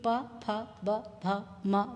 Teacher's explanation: उसके बाद हम सभी जानते हैं कि प फ ब भ म बोलने के लिए विशेष रूप से ओंठ का उपयोग किया जाता है